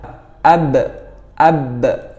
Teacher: Nah, perbedaannya huruf waw dengan huruf ba. Nah, kalau huruf ba ini menempelkan antara bibir bawah dan bibir atas. Kedua bibir ini saling bertemu. Jadi harus syiddah atau harus kuat ya.